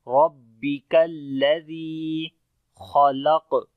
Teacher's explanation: خا کو موٹا پڑھیں گے، لام کو باریک پڑھیں گے، قاف کو بھی موٹا پڑھیں گے حروف استعلا ہونے کی وجہ سے